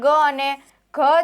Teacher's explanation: ઘોષની અંદર કંઠીયમાં ગ અને ઘ છે